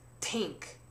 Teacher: they bite down on their tongue so hard that the air can't get out. You have to give yourself a little bit of space to let that air come out. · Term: exploding sound